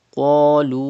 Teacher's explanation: Hamza is in the next word after waw madda. It will be madde munfasil. You have to stretch up to 5 harkat